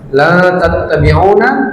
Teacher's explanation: La tattabi'una ikhfa, disamarkan lalu didengungkan.